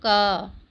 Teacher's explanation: जब क बोल रहे तो अ का उच्चारण भी उसके बाद में आ रहा है